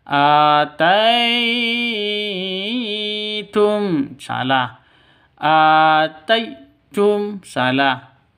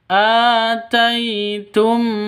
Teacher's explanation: tai ini sifat lin, lemas, lentur, tidak boleh disentak, tidak boleh didengungkan.